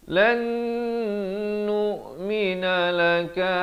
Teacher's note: Wa qalu lan nun mati bertemu nun. Idgham bi gunnah di sini dengan dua harakat.